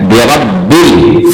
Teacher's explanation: را جو ہے اس پہ اگر زبر آ گئے تو اس کو پر کر کے موٹا کر کے پڑھنا ہوتا ہے